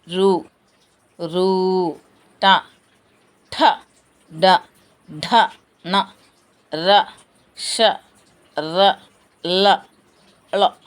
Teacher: మూర్ధన్యములు నాలుక యొక్క కొన భాగం నుండి పుట్టేవి అంటే నాలుక కొనభాగం సహాయంతో పలికేవి